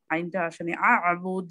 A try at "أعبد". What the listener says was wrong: জি প্রথমে হামজা তারপরে আইন। আ'বুদ।